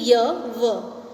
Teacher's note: कोई स्पर्श, किसी को स्पर्श नहीं कर रहा है, ना ही कोई वाइब्रेशन हो रहा है, ना ही किसी से संघर्ष हो रहा है और ना ही किसी से ये स्पर्श करता हुआ बाहर निकल रहा है। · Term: संघर्षहीन